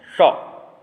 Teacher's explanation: षटकोण वाला जो सा है वो मूर्धन्य सा है